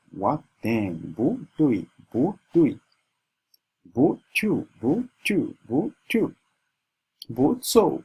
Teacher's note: whenever the word bu is following another word that has the fourth tone, the bu changes to a second tone